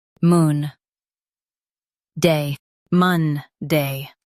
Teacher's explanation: Stress mun and keep day clear.